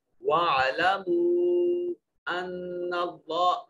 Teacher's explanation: نون مشدد ہے، غنہ واجب ہوگا، اور اسی غنہ کے ساتھ اس میں جلالت آ رہا ہے.